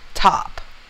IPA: tap